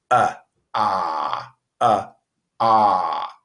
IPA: ɑ